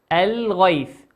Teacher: الغيث لام ساكنة أتى بعد حرف الغين، والغين من حروف اللام القمرية تظهر